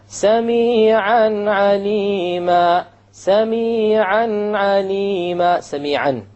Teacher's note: Simple, clear, crisp noon, a tanween, and then you move on to the ayn.